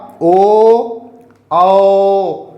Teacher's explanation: दोनों में बराबर मात्रा का समय लग रहा है, बराबर समय लग रहा है, इसलिए दोनों क्या हुए, द्विमात्रिक हुए। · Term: दीर्घ